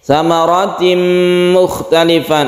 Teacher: ada tanwin bertemu dengan mim, kita sebut dengan idgham bigunah, kita panjangkan, kita gunahkan ini